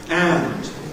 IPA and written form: ænd (and)